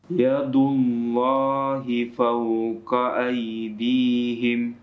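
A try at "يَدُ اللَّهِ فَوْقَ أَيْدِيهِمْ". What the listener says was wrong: Fawqa. Afwan, qafnya tidak panjang.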